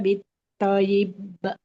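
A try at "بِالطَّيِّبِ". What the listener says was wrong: Jangan ditahan. Kol-kolahnya. Bil toyib. Langsung jangan bil toyib. Bil toyib. Ya-nya kan bertasdid. Dialirkan dulu suara huruf ya-nya. Bil toyib.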